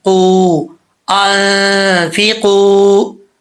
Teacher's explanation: واو ساکن سے پہلے پیش ہو تو واو مدہ ہوتا ہے، ایک الف کی مقدار اس کو لمبا کیا جاتا ہے۔ یہاں پر واو مدہ ہے، ایک الف کی مقدار اس کو لمبا کریں گے۔